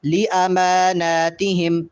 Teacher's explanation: والذین هم لِأَمَانَاتِهِمْ، لِأَمَانَاتِهِمْ اس میں میم پہ بھی کھڑا زبر ہے اور نون پہ بھی چونکہ کھڑا زبر ہے، اس لیے میم کو بھی اور نون کو بھی کم از کم ایک الف کے برابر لمبا کریں گے